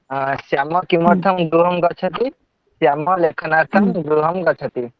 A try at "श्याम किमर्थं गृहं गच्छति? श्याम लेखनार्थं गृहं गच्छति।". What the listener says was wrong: हड़बड़ी मत करो बेटा, यहाँ पर कोई ट्रेन पकड़ने वाले नहीं है, धीरे धीरे बोलो। हाँ, एकदम आराम से बोलो ना, इतना हड़बड़ी कर रही है ना।